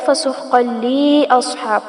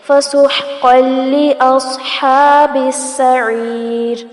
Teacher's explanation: لام زیر لی کو لمبا نہیں کرنا، عموماً یہ غلطی کر دی جاتی ہے، فسحقا لی اصحاب پڑھ دیا جاتا ہے، یہ غلط ہے.